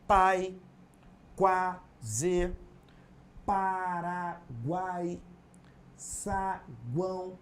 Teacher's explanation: esse encontro de vogais é inseparável devendo ocupar a mesma sílaba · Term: ditongo e tritongo